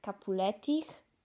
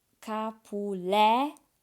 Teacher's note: The accent falls on the second class, so Capuletich. The accent is on the le. · the words have fixed accents which fall on the second last syllable